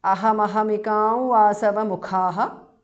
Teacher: Anuswara changes to the nasal of va.